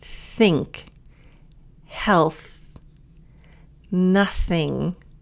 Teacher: So this is the unvoiced TH. So this one's going to have more air.